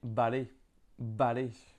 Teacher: on peut entendre un mélange entre un V et un B